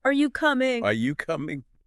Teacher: you naturally raise your voice at the end of the sentence making it sound like a genuine question